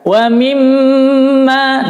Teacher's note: Mim tasydid bacanya adalah ditahan 4 ketukan, gunnah mim 4 ketukan. Wa mimma. Nah, biasanya ketika membaca mim tasydid ini kadang-kadang enggak ditahan, hanya ditekan saja.